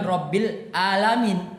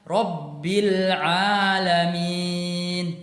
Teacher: tadi membacanya menggunakan huruf hamzah, padahal yang seharusnya menggunakan huruf ain